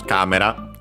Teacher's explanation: Yes, it's accented on the first syllable.